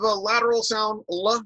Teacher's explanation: a lateral sound, l, which has airflow around the sides of the tongue